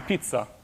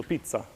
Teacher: There's almost a guttural stop in the middle, so pizza, right? So you almost block your air coming out.